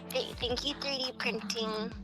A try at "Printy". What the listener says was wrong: not printing printy it's a y it's a printy but you say it printy not print e